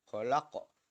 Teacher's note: qaf mati, maka cara membacanya harus dipantulkan. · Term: huruf qalqalah